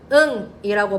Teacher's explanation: 비강을 통해서 소리가 훨씬 더 울림이 더 많이 일어나는 것이구나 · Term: 비음